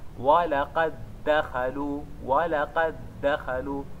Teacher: É obrigatório fazer o idgham. Então levamos o primeiro dal, incorporamos no segundo e colocamos o shadda · É como se tivéssemos um único dal. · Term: idgham mithlain saghir